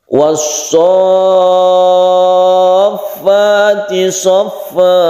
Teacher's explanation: panjangkan dulu sonya, kemudian tasydid fa, sonya 3 alif, kemudian tasydid fa. Ini disebut dengan mad lazim mutawwal atau mad lazim mutsaqal kilmi.